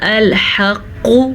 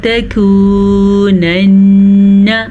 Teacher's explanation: یہ موٹا قاف ہے اور یہ باریک کاف ہے۔ اس کو ہم نے پڑھا الحق اور اس کو ہم نے پڑھا تکونن، آرام سے، نون پہ شد آگے غنّہ کریں۔